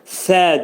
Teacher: Əksəriim sə hərfi pəltək. Dilimiz iki dişin arasına girir xəfifcə.